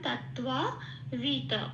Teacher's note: আর্ধেকটা ত বলে ছেড়ে দিতে হবে, যাতে তয়ের সাথে অটা উচ্চারণ না হয়, শুধু তয়ের উপর ব্যাপারটা থাকে।